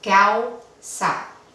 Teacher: Aquí tenemos un diptongo otra vez. Aquí vemos la U, que es vocal débil, se combina con la A